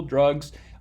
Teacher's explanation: So I might say drugs with a wedge in the vowel as the vowel in that syllable, drugs. In the South, they might say it with more of a schwa, like drugs versus drugs.